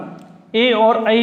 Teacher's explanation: ए और ऐ वर्ण कंठ और तालु दोनों स्थानों से मिलकर बोले जाते हैं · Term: कंठ तालव्य